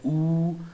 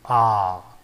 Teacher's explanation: Okay, so that is how your mouth is either a closed position like oo and very open position like ah